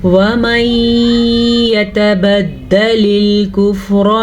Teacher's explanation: یہاں پہ ادغام بالغنہ کا قاعدہ ہو رہا ہے نون ساکن کے بعد یمون میں سے یا آنے کی وجہ سے